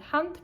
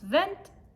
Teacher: In this case, no ending is added to make the word plural. Instead, there is a vowel change, an umlaut, where the a sound becomes e.